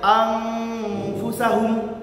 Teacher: Yang terakhir teman-teman ada namanya ikhfa hakiki. Membacanya dengan cara samar-samar atau dengan tambahan eng.